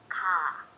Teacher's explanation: ka requires that you push out a lot of air.